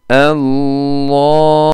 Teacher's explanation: Evet, o sesi lam sesini yukarıya doğru veriyorum. Yani dil ile ağzın yukarısı arasında hapsoluyor o ses, o L sesi. Allah, Allahu la derken hemen ses bu sefer aşağıdan geliyor. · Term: kalın lam